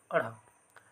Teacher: उत्क्षिप्त व्यंजन कहने का अर्थ है कि जीभ का ऊपर जाना और फिर नीचे आना। तो जब हम इन व्यंजनों का उच्चारण करते हैं तो हमारा जो जीभ है वो ऊपर की ओर जाता है, फिर नीचे की ओर आता है, इसलिए इनको उत्क्षिप्त व्यंजन भी कहा जाता है।